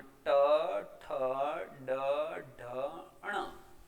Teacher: જીભ જ્યારે દાંતની ઉપરનો ભાગ જે પેઢા છે ત્યાં જઈ અને હવાને રોકે છે અને પછી આ વર્ણોનું ઉચ્ચારણ થાય છે, જેમાં ટ, ઠ, ડ, ઢ, ણ. એ જ્યારે ઉચ્ચારીએ છીએ ત્યારે આપણે જીભને પેઢા સુધી લઈ જઈએ છીએ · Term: મૂર્ધન્ય